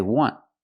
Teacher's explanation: The T in want is a stop T. You don't release it. You don't say I want.